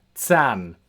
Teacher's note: Our first pronunciation for Z as in German so it's a TS sound so that's sound and this this happens at the start of words in the middle of words at the end of words and also after consonants.